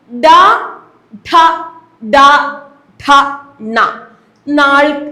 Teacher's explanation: മൂർധാവിന്റെ സഹായത്തോടുകൂടി ഉച്ചരിക്കുന്ന അക്ഷരങ്ങളെ വിളിക്കുന്ന പേരാണ് മൂർധന്യം